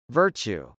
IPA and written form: vˈɝtʃu (virtue)